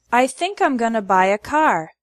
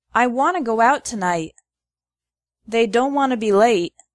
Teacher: want to becomes wanna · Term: reductions